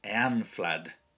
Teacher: So that ash is pronounced like an ah sound.